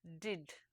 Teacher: for english stops two positions are relevant one of this is contact between the tip of the tongue and the ridge that is just behind the upper teeth and alveolar ridge this is referred to as alveolar place of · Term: alveolar place of articulation